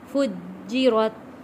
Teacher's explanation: جیم کے اوپر تشدید ہے، سختی کے ساتھ تھوڑا رک کر ادا کریں گے۔ فُجِّرَتْ، فا جیم پیش، فج جیم زیر جی، فجی، را تا زبر رت، فُجِّرَتْ۔